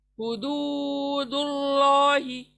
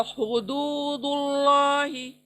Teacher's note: میں دو کو کھینچ رہی ہوں کیونکہ واو مدہ آیا ہوا ہے